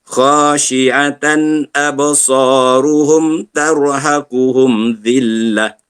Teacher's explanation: Tarhaquhum tebalkan ra. Tebalkan ra kerana ra mati sebelumnya berbaris di atas.